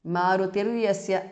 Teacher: मारुतिः विसर्ग changes to repha. यस्य Marutirvyasya because of Sandhi.